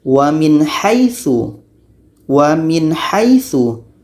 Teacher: Nun jelas, ha pun harus jelas. Nun harus jelas, ha pun harus jelas dan tidak ada dengung. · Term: izhar halqi